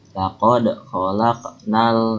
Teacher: itu disebutnya alif lam qamariyah karena alif lamnya juga dibaca jelas.